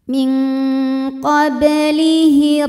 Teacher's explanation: Kemudian ada di tengah bacaan, maka ba-nya dipantulkan dengan pantulan yang kecil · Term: qalqalah sughra